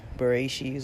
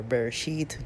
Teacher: some people pronounce it as an S some people pronounce it as a t